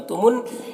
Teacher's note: नून मुशद्दद हर्फ है तो पीछे वाले मुतहर्रिक हर्फ मीम से मिलकर पढ़ा जाएगा और नून मुशद्दद है तो गुन्ना होगा